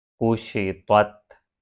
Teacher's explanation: طا ہیویئر اور پھر تا لائٹ پڑھنا ہے